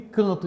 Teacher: esse AN aqui, ele representa um fonema vocálico nasal